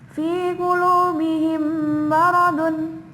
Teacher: Mim sukun bertemu dengan huruf mim. Cara membacanya adalah dimasukkan ke huruf mim dengan mendengung. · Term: idgham mimi